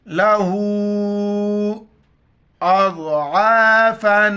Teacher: لہو پر مد ہے، 4 مقدار کھینچنا ہے